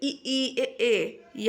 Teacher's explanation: अग्र की बात करें तो इ ई ए आपका जो है अग्र स्वर होगा